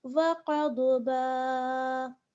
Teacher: अगर हम ठहरेंगे तो एक ज़बर करके अलिफ मद्दा कर देंगे और ठहर जाएंगे , वक़द्बा। और अगर हम आगे वाली आयत के